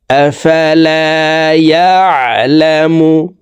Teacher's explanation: ইয়া এখানে আইন হরফকে হলকের মধ্যখান থেকে চাপ দিয়ে উচ্চারণ করব